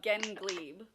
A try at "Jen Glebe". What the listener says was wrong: Oh my God! You said Gen.